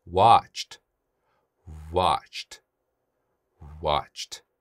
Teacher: 그 다음 watch, 네, 성대 안 떨죠? 그러니까 뒤에 오는 ed는 t로 발음합니다